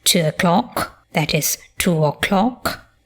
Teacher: we have the characteristic RP feature of smoothing